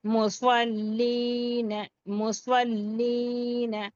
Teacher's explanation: لیکن لام کے آگے ساکین آ گیا، اس لیے لام کو یا سے ملا کر یا مدہ بناتے ہوئے پڑھیں گے، یا ساکین سے پہلے لام پر زیر یا مدہ ایک الفی مقدار کھینچ لیں گے، نون کو جلد پڑھ لیں گے کیونکہ حرکت ہے. · حرف سواد حروف مستعلیہ پورا اور موٹا